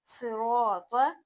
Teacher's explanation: صاد، را اور تو یہ تینوں موٹے حروف ہیں، ان تینوں کو موٹا پڑھنا ہے